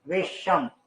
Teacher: इस स से पहले ई या ऊ की ध्वनि है तो स का मूर्धन्यकरण होता है और स बदल जाता है श में